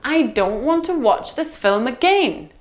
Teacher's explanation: again is our landing point it's the last stressed syllable in the sentence